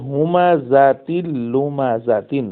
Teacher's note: এটি কি গুন্না থেকে খালি হয়েছে এজন্য এটার নাম ইদগামে কামেল